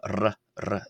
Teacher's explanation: More accurately it's a trilled r as in the Italian word arrivederci